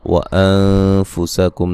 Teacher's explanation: نون ساکن کا باریک اخفاء ہے، میم ساکن کا اظہار ہے